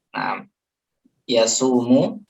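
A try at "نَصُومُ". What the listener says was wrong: Nahnu di sini. Yes. Nasumu ahsan. Non depannya.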